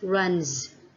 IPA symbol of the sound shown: z